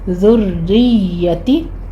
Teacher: را پر تشدید ہے لیکن را باریک پڑھی جائے گی، اس کو آپ نے مرقق پڑھنا ہے